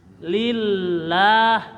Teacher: lil ada lam bertasdid, lillah ditahan. Lillahi, hi-nya pendek.